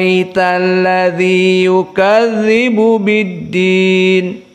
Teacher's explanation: Wars annaf menjadikannya dengan ibdal Hamzah Bi Alif maka diganti hamzahnya dengan alif · maka diganti hamzahnya dengan alif dan dibaca dengan al-isba'